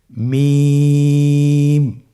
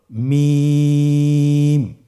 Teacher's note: মিম হরফটির উচ্চারণ স্থান দুই ঠোটের শুকন স্থান থেকে উচ্চারিত হয় · মিম হরফটি উচ্চারণের ক্ষেত্রে অবশ্যই বারিক হবে, পাতলা হবে এবং তিন আলিফ টেনে উচ্চারণ করতে হবে।